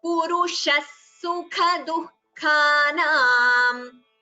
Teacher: Visarga followed by sa, visarga sakara sandhi. So the sa should be heard clearly.